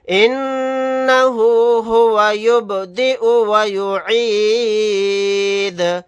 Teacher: با ساکن ہے، یہاں پر قلقلہ کر کے پڑھیں گے